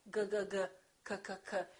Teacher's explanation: G and K have the same point of articulation. It happens back here.